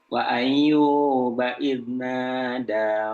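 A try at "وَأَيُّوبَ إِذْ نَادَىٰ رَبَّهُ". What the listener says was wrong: Kurang Ayyuba bertasydid ya.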